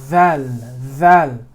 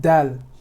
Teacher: the dhal comes all the way from the tip, and the dal comes from a little bit behind the tip.